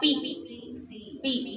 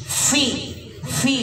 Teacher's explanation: Nah di sini juga harus hati-hati soalnya suka banyak yang baca pi pi ya, bukan pi tapi fi. Jadi perut bibir bawah dengan ujung gigi depan atas. Fi. Jadi ada tiupan.